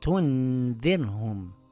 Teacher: This time it made a light nasal sound